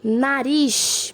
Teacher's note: Ris é a última sílaba, então é a mais forte, então ela é uma oxítona.